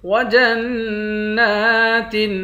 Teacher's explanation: جیم کو نون کے ساتھ ملا کر نون پر غنہ کریں گے. نون پر کھڑا زبر ہے، ایک الف کی مقدار کھینچ کر پڑھیں گے.